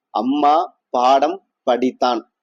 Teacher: மகர எழுத்து தனக்குரிய அரை மாத்திரை அளவில் முழுமையா ஒழிக்கிறது